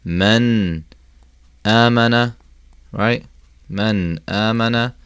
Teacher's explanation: You treat it normally. You pronounce the noon fully. You don't take anything out. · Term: idhar